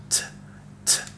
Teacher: The quality of this letter is considered a voiceless sound. Voiceless sound because vocal cords don't vibrate during its pronunciation